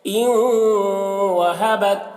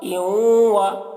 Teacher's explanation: ان وہبت، حمزہ نون واو زیر یوں، واو زبر و یوں و، نون واو کے ساتھ میں مدغم ہو رہا ہے ادھورے طور پر، ناقص طور پر غنہ کے ساتھ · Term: ادغام ناقص